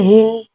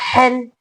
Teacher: یہ ہا حلق کے نچلے حصے سے ہا یہ ہا حلق کے درمیانی حصے سے ہا